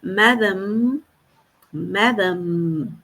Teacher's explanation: Eu tenho esse som do M final como eu tenho no começo da palavra